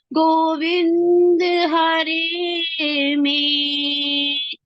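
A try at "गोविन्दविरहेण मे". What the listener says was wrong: हरे नहीं है माता जी, गोविंद विरहेण में, जैसे विरहा पढ़ा है ना हमने, विरा विहा विरहेण।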